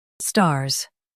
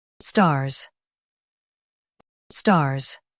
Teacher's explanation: Emphasize star and make Z sound clear.